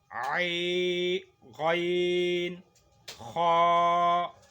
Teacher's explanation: آگے آ گیا چوتھے نمبر پہ غین، خا، یہ حلق کے شروع سے جو منہ کی طرف ہے وہاں سے نکلتا ہے